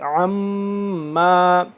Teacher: عین کو حلق کے درمیانی حصے سے، لیکن تھوڑا سا کھچاؤ کے ساتھ